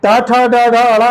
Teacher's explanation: ये टा वर्ग जो है और उसके साथ में ऋषि और सा, ये कहां से उच्चारित होंगे? मूर्धा से।